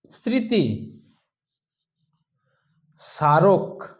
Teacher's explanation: আদিতে যখন ম ফলা বসছে তালবস হোক দন্তস হোক যেখানেই হোক এই ম ফলা আদিতে যখন বসে গেল তখন সেটা রূপ নিচ্ছে অনুনাসিকের